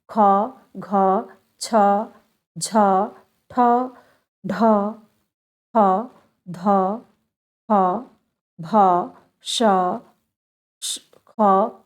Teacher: दूसरा चौथा और ऊष्म व्यंजन ये सब महाप्राण में आते हैं